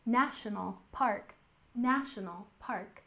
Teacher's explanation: we have emphasis on the first syllable